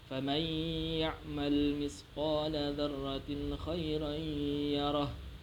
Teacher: di situ ada huruf nun mati bertemu huruf ya yang harus dibaca dengung. Disebut juga huruf idgham bi gunnah.